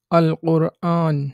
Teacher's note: আল কোরআন অর্থাৎ আলিফের পরে লামটা উচ্চারিত হচ্ছে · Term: হরফে কামারিয়া